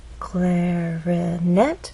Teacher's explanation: clarinet has three syllables clarinet but it's the final syllable that is stressed